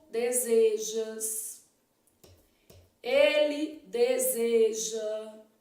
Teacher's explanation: o verbo desejar terminado em ejar apresenta vogal e fechada em toda a conjugação